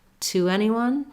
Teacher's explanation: when I'm saying to anyone, the W will sneak in there